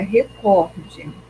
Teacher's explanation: Então, a sílaba mais forte é o có. O correto é recorde, tá?